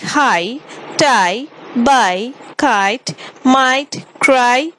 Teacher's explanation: The glide begins in an open position between front and center, moving up and slightly forward towards E. The lips move from neutral to loosely spread. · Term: closing diphthongs